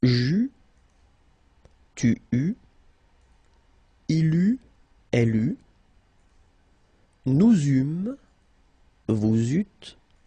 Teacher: Okay, so as you can see, phonetically it's quite a challenge because you've got to keep in mind that for each forms you will pronounce this combination of vowels e, u. You don't pronounce it like normally we would pronounce it e, okay, but we will pronounce it u all the time.